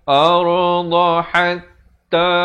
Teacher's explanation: Ha pedas. Di pertengahan kerongkong.